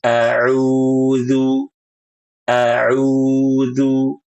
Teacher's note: Harusnya suaranya tidak masuk hidung.